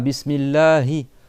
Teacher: Après, tu as le ha. Bismillahi le ha il est en bas de la gorge